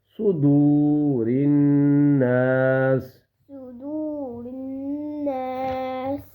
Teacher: آگے واو آ رہی ہے اور اس واو کو, یہ واو مدہ ہے, اس واو کی وجہ سے دال کو 1 سیکنڈ کے برابر کھینچیں گے